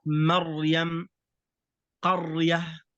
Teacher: الأمر الثالث الراء الساكنة قبلها فتحة، مثل كلمة مريم، قرية، فالراء هنا ساكنة وقبله فتحة، فهنا الراء تكون مفخمة.